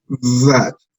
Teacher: Es un sonido intermedio entre la E y la A.